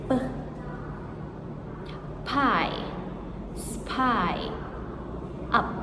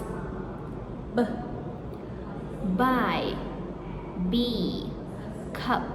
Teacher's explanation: the bilabial stops which is lips together.